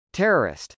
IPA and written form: tˈɛrərɪst (terrorist)